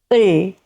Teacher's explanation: it sounds similar to English L, but it is shorter. You close the sound quickly